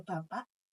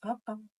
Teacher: Kalau di daerah Jogja Solo itu kan pakai glottal stop.